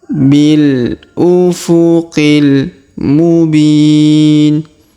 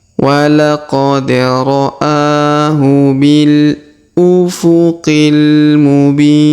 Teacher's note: Huruf b kita panjangkan 2, 4 atau 6 harokat ya, karena di depannya terdapat ya sukun sebelum huruf pemberhentian.